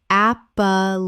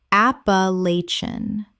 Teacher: Five syllables with the stress on the third and the ending collapses.